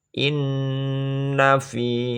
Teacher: Kenapa dibaca gunah? Karena nun bertasjid, bacaannya berdengung.